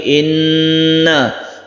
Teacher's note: Guna musyaddadah kita dengungkan, inna kita tahan, tidak langsung inna tapi inna.